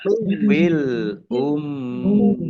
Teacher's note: mim tasdid ini dibaca gunnah atau mendengung, tahan 2 harokat